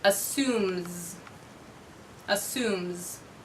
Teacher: Assume ends with a voiced consonant, so I'll add z for the S sound.